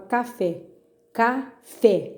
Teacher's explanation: fé caiu na última então é oxítona